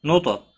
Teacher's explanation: نون ساکن کے بعد نون مشدد ہے، ادغام باگنہ ہوگا، نوتا، تو ساکن پر قلقلہ ہوگا، تو حروف مستعلیہ میں سے پر بھی پڑھا جائے گا